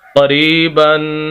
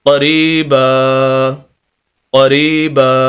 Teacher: وقف کی حالت میں ایک زبر اور الف پڑھا جائے گا